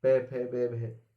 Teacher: दोनों होंठ बंद हो गए, ओष्ठ व्यंजन कहलाते हैं